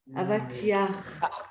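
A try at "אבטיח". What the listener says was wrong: Avatiach. c'est un chet, donc on doit bien entendre avatiach.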